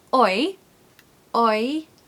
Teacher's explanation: This word needs a little Y sound in the middle to help you say it, okay? It's like a magic Y.